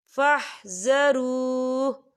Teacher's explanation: یہ دیکھیں آپ کو چھوٹی سی جیم نظر آ رہی ہے، تو یہ وقف جائز کی علامت ہے، تو یہاں پر ٹھہرنا بہتر ہے. وقف کی صورت میں ہا جو ہے وہ ساکن ہو جائے گا